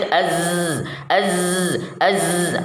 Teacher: ujung lidah diangkat ke atas sampai hampir menempel pada gusi dua gigi seri bagian atas dengan demikian antara ujung lidah dengan gusi tersebut ada celah tempat